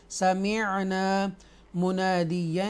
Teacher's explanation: سمعنا عین ہے، مخرج عین ہے، حروف حلقیہ میں سے ہے، سمعنا منادیا ادغام کریں گے، یہاں پر حروف یرملون میں سے یا ہے